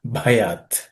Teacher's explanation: The bhayat in the first word, the first letter is aspirated.